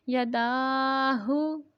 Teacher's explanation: الٹا پیش کو ایک الف کی مقدار تک لمبا کرتے ہیں اور جو سیدھا پیش ہے، جو صرف پیش بھی پڑھ سکتے ہیں، سیدھا پیش بھی کہہ سکتے ہیں، اسے یہ حرکت ہے، اسے لمبا نہیں کریں گے، اور جو الٹا پیش ہے اس کو ایک الف کی مقدار تک لمبا کر کے پڑھیں گے، یداہو۔